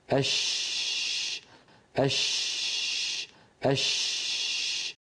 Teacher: مخرج شین کو دیکھیں، یہ بھی درمیان زبان اور درمیان تالو سے ادا ہوتی ہے جیسا کہ ہم دیکھ رہے ہیں، لیکن اس کا مخرج تھوڑا سا کھلا رہتا ہے، نہ کہ جیم کے مخرج کی طرح بند رہتا ہے۔ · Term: شین کا مخرج